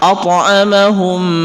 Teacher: maka itu dengung, didengungkan, karena sifat daripada mim tasdid itu merupakan gunnah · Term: idgham mimi